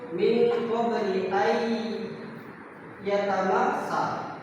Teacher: Contoh bacaan idgham biguna itu min qabli ay yatamassa. Jadi kan ketika huruf nun tadi bertemu dengan huruf ya, itu menjadi bacaannya itu ayya, berarti didengungkan